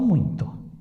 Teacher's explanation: muito não tem M, não tem N, não tem tio, mas é nasal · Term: ditongo nasal